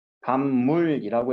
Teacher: 비읍 소리가 미음 소리로 바뀌었죠. 비읍 소리가 자기의 비음으로 바뀌었어요. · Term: 비음화